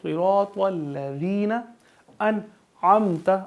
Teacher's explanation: ذال میں سیٹی کی آواز نہیں آئے گی